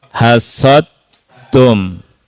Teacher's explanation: murni huruf ta masuk dalnya enggak kelihatan, enggak kedengaran